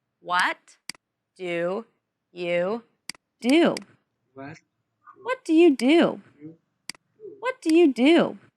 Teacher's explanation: there is the falling intonation and the emphasis on what and do in the sentence